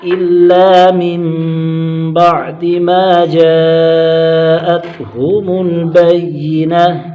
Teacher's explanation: ما پر الف مدہ، جیم پر مد متصل، حرف مدہ کے بعد حمزہ اسی کلمے میں ہے، 2 2.5 4 الف تک کھینچ کر پڑھیں گے